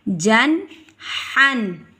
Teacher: دو زبر کے بعد حا آ گیا ہے حروف حلقی کا، جیسے میں نے آپ کو پیچھے بتایا ہے. دو زبر کے بعد اگر حا آ جائے تو وہاں پر ہم گنہ نہیں کریں گے، اظہار کریں گے، واضح کر کے ادا کریں گے.